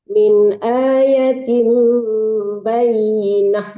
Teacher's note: Bayyinah matinya ha, kalau ta marbutah ya dimatikan